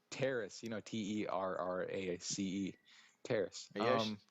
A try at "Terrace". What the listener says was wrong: Are you actually serious? It sounds like you're saying terrorist. Yeah, but it sounds like you're saying terrorist.